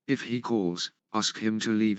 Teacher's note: The tone rises in the first clause and falls gradually in the second clause.